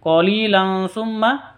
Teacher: tanwin bertemu dengan sa. Cara bacanya samar didengungkan.